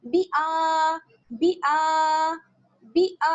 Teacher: ایسے نہیں پڑھنا ہے، بلکہ با کو جلدی سے پڑھیں گے، اور حمزہ پہ کیا ہے؟ کھڑا زبر ہے، تو اس کو کھینچ کر پڑھیں گے